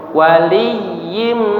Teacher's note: Yang didengungkan adalah yimnya ya. Karena tanwin bertemu dengan huruf mim.